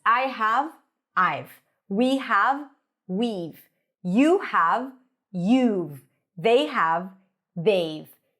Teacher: We drop the H, we drop the vowel there. · And to reduce the have to v. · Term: Reductions